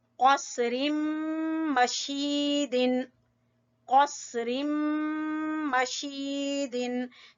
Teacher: शीन को खींचेंगे या मद्दा की वजह से